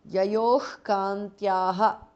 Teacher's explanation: Shivasamana vyavasitam is a compound word. Yayoho, visarga changes to jihva muliya. Kantyaha, yayoh kantyaha because of sandhi.